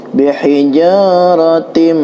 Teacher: Min itu adalah ikhfa, nun sukun menghadapi huruf sin, dibaca dengung